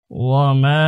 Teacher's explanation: واو زبر و، ميم ألف زبر ما، وما ওমা, মিমের উপর জবর, বাম দিকে আলিফ খালি, মাদের হরফের উপর চিকন চিহ্ন রয়েছে, এই জন্য আমরা 3 আলিফ টেনে পড়ব।